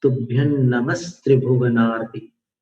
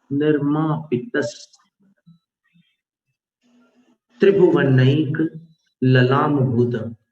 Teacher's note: तो स में बदल गया विसर्ग। तो जो भी विसर्ग वाला अक्षर होता है उसके साथ ही विसर्ग का उच्चारण करते हैं और उसके साथ ही विसर्जनीय संधि हो जाने पर भी जो संधि वाला रूप है उसका उच्चारण करते हैं।